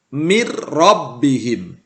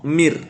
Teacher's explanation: Ada nun sukun bertemu dengan huruf ro. Maka nun sukunnya tidak terbaca karena kita lebur ke huruf ro, mir. Tetapi tidak didengungkan. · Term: idgham bila gunnah